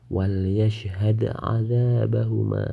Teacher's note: Cara membaca huruf dal dibaca memantul ringan. karena tidak berada di akhir suatu kalimat, tapi berada di tengah-tengah kalimat. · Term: qalqalah